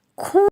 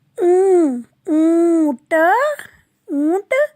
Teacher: नासिका के अंदर से स्वर की आवाज सुनाई देती है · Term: चंद्र बिंदु